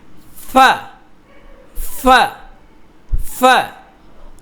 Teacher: ফা যখন বলবেন আপনার দাঁতটা ঠোঁটের মধ্যে লাগবে, নিচের ঠোঁটে। উপরের দাঁতটা নিচের ঠোঁটের মধ্যে লাগবে।